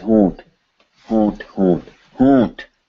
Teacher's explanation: The whole thing is nasalized. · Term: nasalized on